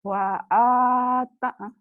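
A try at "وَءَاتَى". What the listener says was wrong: Panjang atuh. Kan panjang sama. Mad asli.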